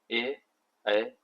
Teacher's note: कंठ तालु से होते हैं ए ऐ